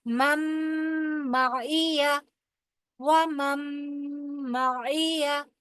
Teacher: پہلا میم جا کے اس کا دوسرے میم کے اندر ادغام ہو جائے گا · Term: ادغام بالغنہ